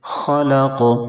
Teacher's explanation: یہاں پر بھی وقف کی وجہ سے قاف ساکن ہو جائے گا، قاف حروف قلقلہ کے 5 حرفوں میں سے ہے، اس لیے قاف میں قلقلہ ہوگا، آواز لوٹ جائے گی